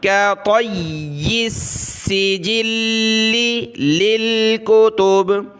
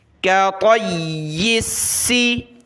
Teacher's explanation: یا اور سین کو سخت کریں گے تشدید کی وجہ سے، طا کو موٹا پڑھنا ہے